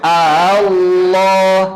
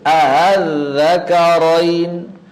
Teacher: mengubah hamzah yang syiddah menjadi hamzah yang rikhwah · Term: tashil